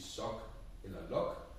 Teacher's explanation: For eksempel, at når E står i en tryksvag stavelse, så lyder det lidt ligesom for eksempel i svane. Eller at når ordet er kort, så lyder det lidt ligesom å